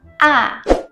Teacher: this tone is from the highest pitch, 5, to the lowest pitch, 1. So the key point here is you must let your voice go in down in a quick time. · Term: fourth tone